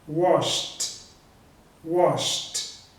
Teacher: Então esse verbo com a terminação de SH não tem vibração também, wash. Então eu vou pronunciar o ed com som de T